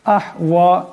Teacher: এখানে বড় হা সাকিন, আওয়াজটি গলা থেকে আনতে হবে।